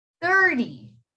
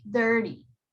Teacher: the t has r before it so you're gonna pronounce that t as a d